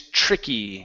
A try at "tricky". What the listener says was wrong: Okay, this is a TR sound. So instead of saying too twicky, okay, you're pronouncing a